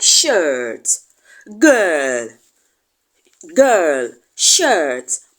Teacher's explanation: we also have the ER sound which is often referred to as the longer counterpart of the a sound er er they are commonly found in words like shirt girl